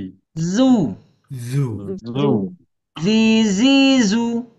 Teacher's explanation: Zai ini keluarnya dari ujung lidah menempel ke gigi seri yang bawah, ya. Nah, kemudian ayah bunda di sini ada sifat desis sofir Z ya. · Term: huruf zai